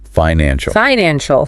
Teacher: The key here is syllable stress. The word financial has 3 distinct syllables, and the structural emphasis must land heavily on the second.